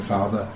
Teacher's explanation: in my local accent we say father, with a schwa sound at the end.